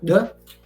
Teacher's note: So without the bar, it's pronounced like a Z, Z. And with the bar, you pronounce it as D, like the English D, but it's a little bit ingressive, so D.